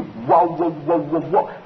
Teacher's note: The labiovelar glide, represented by the grapheme W.